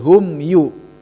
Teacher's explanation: mim ya bertemu sama iya. Tidak ada tahanan ya gitu. Hum yu izhar safawi ya, jadi hanya jelas di bibir